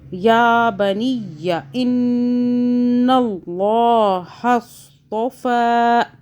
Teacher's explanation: ان نون مشدد ہے، گنہ کریں گے 2 سیکنڈ کا